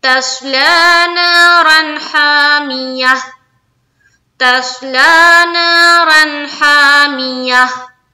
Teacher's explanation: इजहार के माना है जाहिर करना, किस चीज को? नून की आवाज को जाहिर करना है, देर वगैरह नहीं करनी है, खींचना भी नहीं है